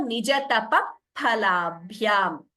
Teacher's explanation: it is not fa sound actually, but it is Upadhmaniya, which uses only the lips